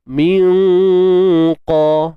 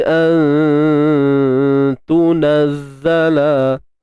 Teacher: Huruf qaf kan bersifat tebal, ta ni nipis.